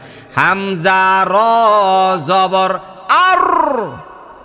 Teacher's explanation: জিহিবার আগার যে উল্টা পিঠটা উপরে যাইয়া, মানে তালুতে যাইয়া একটা ভাইব্রেট হয়, কাপাকাপি হয়